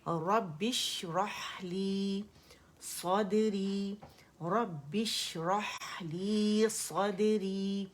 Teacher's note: اگر اس سے زیادہ ہم نے اس پہ رک گئے، جماؤ دے دیا، تو پھر یہ مشدد ہو جائے گا. ایک شین ہے، اس کی صفات جو شاورنگ ساؤنڈ ہے، جو تفشی ہے، وہ ہم نے ظاہر کرنی ہے